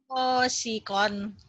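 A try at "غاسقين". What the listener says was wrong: Go, bukan ho, tapi go. Gosikon. Tadi kedengarannya kayak hosikon ya. Hosikon, bukan ho. Gosikon.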